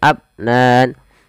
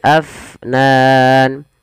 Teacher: alirkan nafasnya jangan abnan tapi Afnan